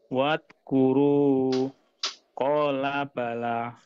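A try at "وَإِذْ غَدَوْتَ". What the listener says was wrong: Masih ada jeda Pak, disambungkan.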